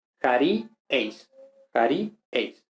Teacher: Luego, el nominativo, pues otra vez, sigmático, por tanto, aquí la sigma ni tau va a desaparecer y como consecuencia va a haber un alargamiento compensatorio por el que e se convierte en el diptongo ei